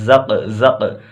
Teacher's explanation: یہاں قلقلہ کریں گے آواز لوٹے گی